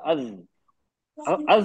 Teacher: बोलते वक्त हमने जबान को पीछे से उठा दिया नरम तालू की तरफ उठा दिया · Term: हैवी